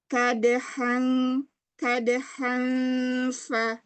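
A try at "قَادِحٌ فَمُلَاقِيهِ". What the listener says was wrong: Masih ada sedikit ke eng ya dari eng-nya.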